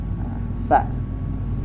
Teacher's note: Sa ada udara atau napas di saat kita mengeluarkannya, sa ya. Udara dari mulut sa. · sa ini dia termasuk rokhawah, berlalu, dan dia pun juga al-hamas, mengeluarkan udara atau napas di saat kita mengucap huruf sa. Sa ada udara atau napas di saat kita mengeluarkannya, sa ya.